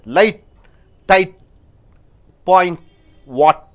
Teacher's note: T is not pronounced. T is held in the tongue position.